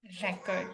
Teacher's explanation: on the flip side, when you are making a record in your copy, in your file, you have to pronounce record. RE is the first syllable, CORD is the second syllable, and you have to give the stress on the first syllable.